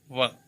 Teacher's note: ऊपर के दांत और नीचे के होठ, दोनों होठों से नहीं बोला जाता है ये। ऊपर के दांत यानी ओष्ठ, दंत ओष्ठ, दंत ओष्ठ, ये होता है व।